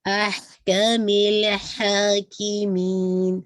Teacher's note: लाम पे बाउंस नहीं करना, हा को 2 काउंट पढ़ना है, और जब आप इसको रोकेंगे तो मद्दुल आरत लसुकून।